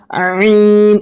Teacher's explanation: গয়ন গয়ন, এই আইন অক্ষরটি আপনারা দেখতে পাচ্ছেন, এই আইন অক্ষরটি আমাদের অনেকজনেরই বের হয় না। আইন অক্ষরটি গলা চাপ দেওয়ার মতন করে বের হবে